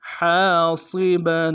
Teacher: ہا کے ساتھ الف مدہ ہے، ہا کو گہرائی سے ادا کریں گے، الف مدہ کو ایک الف مدار میں کھینچیں گے، صاد کو موٹا ادا کریں گے، با کے اوپر تنوین ہے، غنہ کریں گے، وقف کی صورت میں با کو الف سے بدلیں گے۔